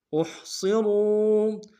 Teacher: الذین احصروا، حمزہ کو ہا کے ساتھ ملانا ہے، ہا کو گہرائی سے ادا کریں گے، صاد کو موٹا ادا کریں گے، را کو موٹا ادا کرتے ہوئے واو کے ساتھ ملانا ہے، واو مدہ ایک الف مقدار میں کھینچیں گے